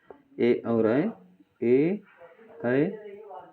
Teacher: ए और ऐ को कंठ और तालु से बोलते हैं।